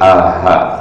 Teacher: Jadi tenggorokan bagian bawah atau pangkal tenggorokan. Hurufnya ada dua, hamzah dengan ha.